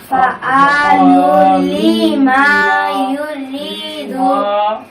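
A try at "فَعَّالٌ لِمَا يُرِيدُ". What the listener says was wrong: এখানে কিন্তু সেই জবর এটা খালি আলিফ আছে, ওইটা কিন্তু এক আলিফ মাত্র ঠিক উচ্চারণ হয় না আবার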